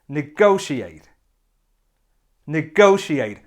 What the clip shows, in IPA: nɪˈɡəʊʃieɪt